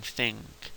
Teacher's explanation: It's not technically it's an N, it's actually a velar nasal